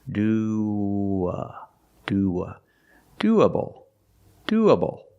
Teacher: When you link these two vowels, you have like a W sound in the middle, linking the vowels